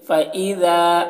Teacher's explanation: ذال کو باریکی کے ساتھ، زا نہیں پڑھنا ہے ، الف ہے تو تھوڑا کھینچیں گے، فإذا هم، یہاں پر